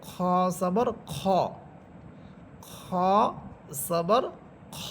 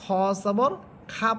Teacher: খ খ হরফের উপরে আমরা যখন জবর দিব তখন তার উচ্চারণ হবে খ জবর খ, খ জবর খ। এখানে খ জবর খা পড়া যাবে না, খ জবর খ পড়তে হবে। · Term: মোটা হরফ